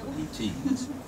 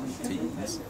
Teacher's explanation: routines, stress is on the second syllable, routines, then it makes all the difference in the world. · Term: iamb